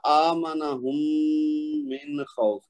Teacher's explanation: ٹھیک ہے، یہ جو ہے نا آمنہم من خوف، یہ تھوڑا سا اس کو غنہ کریں گے نا تو میم کا میم میں ادغام غنہ کے ساتھ کرنا، تھوڑا سا اس کو لمبا کریں گے زیادہ صحیح ادا ہوگا.